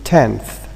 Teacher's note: n is realized as a dental when it occurs before another dental sound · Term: dentalized